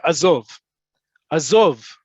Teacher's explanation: The emphasis on the last syllable.